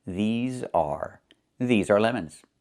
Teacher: Make sure you make the long e sound like green beans. These plus the z sound like in zebra and zipper. Z with a voice.